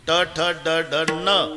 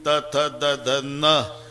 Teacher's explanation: ट ठ ड ढ न, दाताशी संबंध नाही. त थ द ध न, दाताशिवाय उच्चार नाही